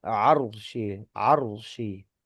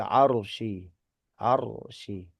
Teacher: ro sukun di sini hukumnya adalah tebal atau tafkhim gitu ya. Arsy arsy gitu kan ya zul arsy arsy kan ya tebal huruf ro-nya. · maka ro sukun di sini hukumnya adalah tebal atau tafkhim